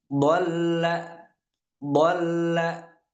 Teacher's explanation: Dol kita tahan untuk sesaat baru kita fathahkan lam yang setelahnya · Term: tasydid